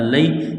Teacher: ہا پیش ہو، نتلوہ، ذالک نتلوہ، عین زبر ع، لام یا زبر لی، یا ساکن سے پہلے زبر ہے، حروف لینیا ہے، اس کو کھینچنا نہیں ہے